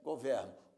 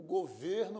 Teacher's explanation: O verbo governar, pronúncia aberta, governo. O governo brasileiro, pronúncia fechada, o substantivo.